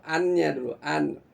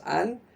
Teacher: Begitu kita baca an, ujung lidah kita pasti menyentuh langit-langit atas ya, langit-langit atas bagian depan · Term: nun